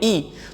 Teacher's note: तो हमारी जीभ की जो आगे वाली नोक है वो नीचे वाले दांतों के मसूड़ों को स्पर्श करती है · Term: अग्र स्वर